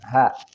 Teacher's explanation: Nah, masih dalam konteks makhraj halqi. Namun ha ini ada satu posisi dengan alif atau hamzah, yaitu di pangkal tenggorokan